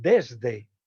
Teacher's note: Es dental en desde y sonoro igualmente.